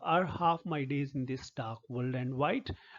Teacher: unstressed followed by stressed syllables and 10 syllables and 5 feet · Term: iambic pentameter